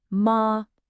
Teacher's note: The first tone is high and flat. Your voice just stays level, way up high.